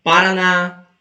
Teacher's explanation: Porque é uma oxítona. A sílaba tônica mais forte é a última e termina em A.